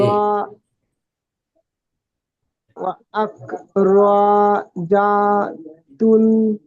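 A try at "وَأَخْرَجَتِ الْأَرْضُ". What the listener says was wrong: তুল নয়, তিল। ওয়া ওয়া আখরাজাতিল আরদু।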